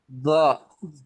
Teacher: এই জিহ্বার আগাটা দাঁতের আগার সাথে, উপরের দাঁতের আগার সাথে লাগাইয়া তারপর বলেন।